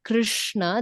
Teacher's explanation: It has to roll because the r, the sh, the na, all of them are murdhanya sound. So your tongue has to roll.